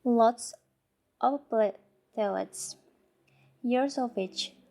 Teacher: we omit the V sound in the of